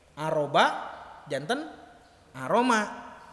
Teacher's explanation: Karena B dan mim satu artikulasi di bibir. Satu makhraj.